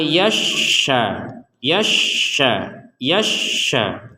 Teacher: di sini ada syin bertasdid Q bertasdid maka ini dua-duanya harus ditekan